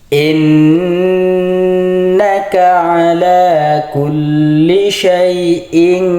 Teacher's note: nun berharakat tasydid maka cara membacanya ditahan dua harakat atau didengung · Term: ghunah